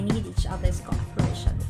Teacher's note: cooperation should be stressed on the fourth syllable